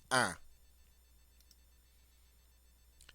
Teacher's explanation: Notice it's one of the 4 nasal sounds. You don't hear the N. It's simply un.